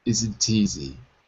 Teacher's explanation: the T gets passed from isn't to easy